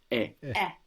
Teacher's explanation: a little like the E on yeah like when you say yeah but it also stops quite sharply